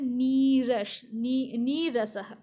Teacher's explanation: विसर्ग उसके बाद र है इस कारण र होता है तो विसर्ग का लोप होता है और छोटी ई की मात्रा बड़ी हो जाता है